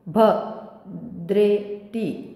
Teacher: भद्रेति भवर आघात येईल पुढे, कारण जोडाक्षर आहे. कारण की जर कुठे जोडाक्षर असेल तर त्याच्या आधी येणाऱ्या स्वरावर आघात द्यावा, जोर द्यावा, म्हणून भद्रेति असं येईल ते.